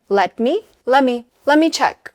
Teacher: the T and the M blend together and the 2 words become one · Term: reduction